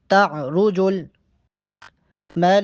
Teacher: من اللہ ذی المعارج، من اللہ ذی المعارج، تعرج الملائکۃ والروح الیہ فی یوم کان مقدارہ 50 الف سنہ، تعرج الملائکۃ، تعرج را کو موٹا پڑھیں گے، تعرج الملائکۃ، لام پہ مد ہے، لام کو 6 الف کے برابر لمبا کر کے پڑھیں گے۔